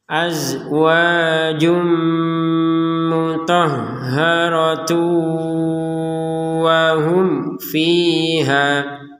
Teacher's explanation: ada tanwin bertemu wawu, dimasukkan dengan dengungan